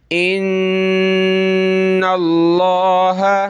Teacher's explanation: تو لفظ اللہ سے پہلے دیکھیں نون پہ زبر آ رہی ہے تو ہم نے لفظ اللہ کو بڑا کر کے پڑھنا ہے اور نون پہ ہم نے غنہ کرنا ہے